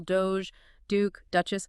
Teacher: It's built almost entirely on that D sound. Right. That quick tap of the tongue just behind the teeth.